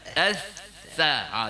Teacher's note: huruf dia tu ujung lidah bertemu ujung gigi atas. Jadi kalau kita nak buat dia, kita angkat huruf dia ujung lidah tu s bagi tersentil lidah tu. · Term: Huruf sa